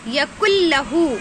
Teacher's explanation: اس میں گنہ بھی نہیں ہوگا، سیدھا کاف کو لام سے ملا کر پڑھیں گے · ولم یکن لہ کفوا احد، ولم یکن لہ، دیکھیے یہاں پر کیا ہو رہا ہے، یکن لہ میں نون سائلنٹ ہو گیا ہے کیونکہ نون پر جزم ہے اور لام پر تشدید آ گئی ہے